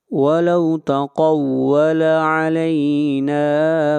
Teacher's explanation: نون کو کھینچ کر پڑھیں گے ایک الف کے برابر، یہاں پر الف مدہ ہے۔